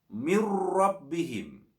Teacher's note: bacaan nun sukunnya dilebur masuk kepada huruf ra, kemudian disertai tidak mendengung. Tidak diperkenankan dibaca mendengung. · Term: idgham bila gunnah